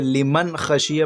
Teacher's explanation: نون ساکن کے بعد حروف حلقی کے 6 حروف میں سے خا آیا ہے، اس لیے یہاں پر بغیر غنہ کے لیمن خشیہ پڑھ رہے، لیمن خشیہ نہیں پڑھ رہے ہیں۔